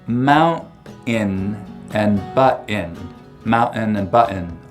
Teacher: You'll also hear mount-in and butt-in, mountain and button a lot in Utah, especially among younger speakers with just a pure glottal stop for that T sound in the middle of the word.